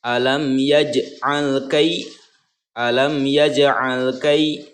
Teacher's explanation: Nah, ini kai ya mati yang sebelumnya berharokat fathah. Ini adalah huruf lin, dibacanya lunak dan dibacanya pendek